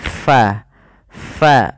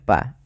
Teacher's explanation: huruf Fa itu harus dialirkan nafasnya karena dia Fa memiliki Salah satu sifat yaitu sifat hams